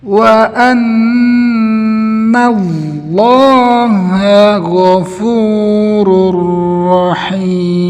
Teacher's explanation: tebalnya lam lafzul jalalah, bukan dari huruf nun. Banyak orang yang mau menebalkan lam lafzul jalalah, dia juga ikut menebalkan huruf nun yang berharokat fathah, sehingga terdengar seperti ini.